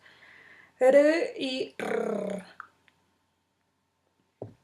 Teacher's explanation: una o varias oclusiones breves entre el ápice de la lengua y los alvéolos. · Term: vibrantes